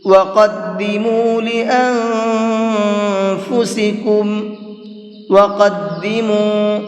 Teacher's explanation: یہ بڑا قاف ہے، اس کو منہ بھر کے پڑھیں گے